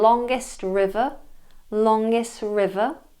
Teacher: we have the deleted T in longest river